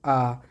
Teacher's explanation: विवृत स्वर है आ। विवृत मतलब जिसमें मुंह पूरा खुल जाए, तो विवृत स्वर आ है।